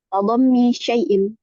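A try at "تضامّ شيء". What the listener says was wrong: Bacanya kasih panjang. Tadomi, iya kan? panjang ini.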